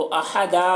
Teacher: देखिए यहाँ पर अहदन है, जब वक्फ़ करते हैं तो अहदा पढ़ते हैं, अहदन नहीं पढ़ते हैं